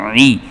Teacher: عین جو ہے یہ حروف حلقی میں سے ہے، اس کو حلق میں سے ادا کرنا ہوتا ہے۔ ہا بھی حروف حلقی میں سے ہے، جبکہ جو دال ہے یہ حروف قلقلہ میں سے ہے۔